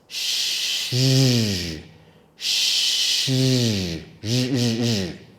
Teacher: It is like the sh sound sh, but we add our voice.